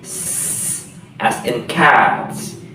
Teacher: the final sound is voiceless